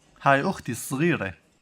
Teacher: I'm hearing a little like a almost trilled R, but not completely.